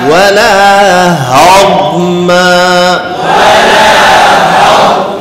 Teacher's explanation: এই মিমের মধ্যে ঠোঁট মিলবে